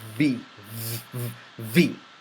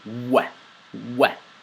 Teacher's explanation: in the V, you do a slight bit of a smile, and your lower lip touches your tooth, front upper teeth.